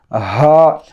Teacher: یہ سینے سے آنا آواز، حلق سے نہیں